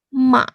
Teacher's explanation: Sekarang nada ketiga. Nada ketiga ini dari nada kedua turun nada ke satu, kemudian naik nada keempat.